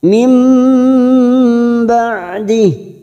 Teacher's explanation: huruf ain, jangan samakan dengan hamzah. Huruf ain memiliki sifat tawasud. · Mim ba masuk ke huruf ba, kita dengungkan dan siap masuk ke huruf ba dan ditahan selama tiga harokat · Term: bacaan iklab